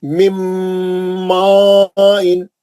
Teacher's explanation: मिम्मा इन क्योंकि बाद में मद आ रहा है ना, नून कहाँ चलेगा, मीम के अंदर है, सख्ती से अंदर चलेगा, नून नहीं पड़ेगा, मीम का गुन्ना हो रहा खाली। मिम्मा इन, मीम का ही गुन्ना होगा, नून उसके अंदर है,